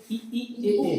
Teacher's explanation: तो मुंह थोड़ा सा क्लोज रहता है ई ए बोलने में